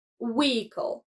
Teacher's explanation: In standard English, we often skip the H sound, making it vehicle. Yet, you might come across some speakers who pronounce the H in a more formal context. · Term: silent H